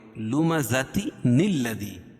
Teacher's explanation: کیونکہ یہاں 2 زیر کی تنوین ہے، تو قاعدہ ہے کہ 2 زیر نون ساکن یا تنوین کے بعد اگر حمزہ وصل ہو اور اس کے بعد آنے والا حرف ساکن ہو تو تنوین کے نون کو زیر دیتے ہیں